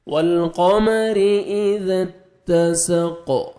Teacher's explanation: قاف جب سٹاپ کریں گے قاف ساکن ہو جائے گا اور ڈبل ساؤنڈ آئے گا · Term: حروف قلقلہ